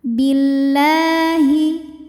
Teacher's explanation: lam jalalah dibunyikan secara tarqiq karena huruf sebelumnya berharokat kasroh, maka lam dibaca tipis